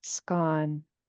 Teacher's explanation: This first part of his name is a long, it's a double A and it's no accent mark, so it's low tone. So, just stay even tone.